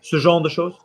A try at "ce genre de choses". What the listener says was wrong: No, we've got spoonerisms going on, the same as we had with David, which means your mouth needs to be tighter